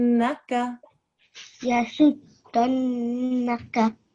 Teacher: it's a thin sound you don't need to round your mouth